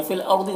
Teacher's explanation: रॉ को पुर पढ़ेंगे, गौद को भी पुर पढ़ेंगे।